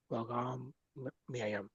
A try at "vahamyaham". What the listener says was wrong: Vahamyaham. Myaham. Vahamyaham. No, after mya, there's ha also. Vahamyaham.